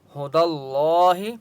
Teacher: ہدى اللہ، ہو دل، دال کو لام کے ساتھ ملائیں گے، ٹھیک ہے، اور اللہ کا نام موٹا ہوگا کیونکہ اس سے پہلے دال کے اوپر زبر ہے